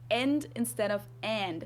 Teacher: we just use the German e sound instead of an English a